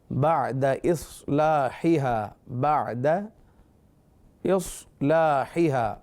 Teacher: صاد اگرچہ ساکن ہے مگر حروف مستعلیہ میں سے ہے لہٰذا پر پڑھیں گے